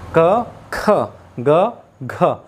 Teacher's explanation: ख में अधिक वायु निकलती है और घ में भी अधिक वायु निकलती है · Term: महाप्राण